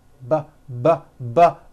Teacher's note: look at the same sound the P sound but this time we'll add voicing by vibrating our vocal cords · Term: B sound